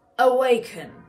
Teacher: you heard that bit of an aspiration that sort of an h breathy sound on the k